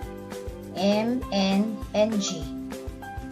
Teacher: Nahaharang ang hangin na dapat ay sa bibig lumalabas dahil sa pagtikom ng mga labi, pagtukod ng dulong dila sa itaas ng mga ngipin, o kaya ay dahil sa pagbaba ng malambot ng alangala. Ang nangyayari ay hindi sa bibig lumalabas ang hangin kundi sa ilong. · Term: pailong